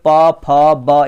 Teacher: ओठ से देखेंगे तो आप देखेंगे प जब भी बोलेंगे प फ ब, या बिना होठ सटाए आप इसको बोल नहीं सकते हैं